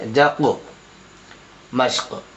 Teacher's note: قاف میں بھی قلقلہ ہوگا کیونکہ قاف کے اوپر جزم ہے اور قاف حرف قلقلہ میں سے آ رہا ہے، اس لیے یہاں قلقلہ ہوگا.